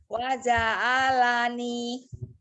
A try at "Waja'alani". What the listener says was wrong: Ya, mana yang panjang yang huruf terakhirnya saja A-nya tidak panjang. Jangan berhenti. Waja'alani. Enggak, Mi, itu bukan masalah logat ya.